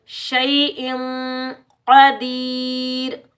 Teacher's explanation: क़ाफ हरूफ मुस्तअला मोटा पढ़ेंगे। या मद्दा को एक अलिफ की मिकदार में खींच कर अदा करेंगे।